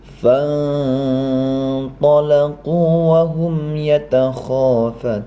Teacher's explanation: Dalam kesempatan ini adalah nun mati ya bertemu dengan to ya. Maka dia termasuk ikhfa, maka harus samar-samar dan dengung